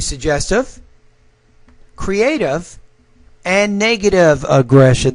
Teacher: here needs to be rising to suggestive creative and negative aggression that's when you drop the tone when you're at that third item the tone should fall there so you're not you're more flat your tone is a little